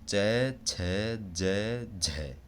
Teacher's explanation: और स्पर्श संघर्षी होते हैं जो कि च छ ज झ इनमें थोड़ा संघर्ष होता है हमारी जो वायु निकलती है हमारे मुख से उनमें थोड़ा सा संघर्ष अधिक लगता है